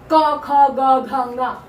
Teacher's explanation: जीभ का पिछला भाग ऊपर छूता है · क वर्ग के 5 वर्ण कंठ से बोले जाते हैं। इसका उच्चारण स्थान कंठ है, क्योंकि कंठ का गला जहाँ शुरू होता है अंदर की तरफ, वहां से बोले जाते हैं।